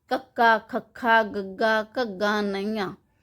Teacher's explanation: ਉਚਾਰਨ ਸਮੇਂ ਜੀਭ ਦਾ ਜੋ ਪਿਛਲਾ ਹਿੱਸਾ ਹੈ ਉਹ ਕੋਮਲ ਤਾਲੂ ਦੇ ਨਾਲ ਛੂੰਹਦਾ ਹੈ। ਇਸ ਕਰਕੇ ਇਸ ਦੀ ਆਵਾਜ਼ ਕੰਠ ਵਿੱਚ ਆਉਂਦੀ ਹੈ। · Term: ਕੰਠੀ ਵਿਅੰਜਨ